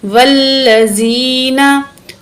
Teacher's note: वल्लज़ीना, वाव ज़बर लाम, वल, वाव को लाम के साथ मिलाएंगे, दरमियान में अलिफ को नहीं पढ़ेंगे, वाव को लाम से मिलाएंगे, लाम के ऊपर तशदीद है, वाव ज़बर लाम, वल, लाम ज़बर ला, वल्ला, ज़ाल ज़ेर या ज़ी, नून ज़बर ना, वल्लज़ीना, या साकिन है, उससे पहले ज़ेर है, हरूफ़ मद्दा है, एक अलिफ की मिकदार खींचेंगे या को, वल्लज़ीना, तो ज़ाल जो है या से मिल रहा है इसलिए हम ज़ाल को भी खींच के पढ़ेंगे, ज़ाल को नरमी से भी पढ़ेंगे।